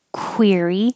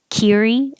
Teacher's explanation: the q u sounds like a kw so you have to round your lips